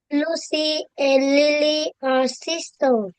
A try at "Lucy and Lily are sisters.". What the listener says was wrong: Sisters. We have an S here.